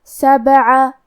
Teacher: با حروف القلقلہ میں سے ہے تو ہم یہ حرف کو ہلاتے ہوئے یہ کلمہ کو پڑھیں گے